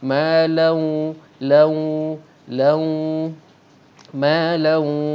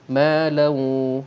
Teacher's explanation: Ada sengaunya, sebab sengau itu menunjukkan bunyi dengung keluar pada makhrajnya, iaitu rongga hidung. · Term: idgham ma'al gunnah